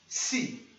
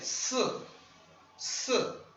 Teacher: a gente não vai pronunciar um I definido, tá? Isso aqui não é tsi, isso aqui é ts, ts.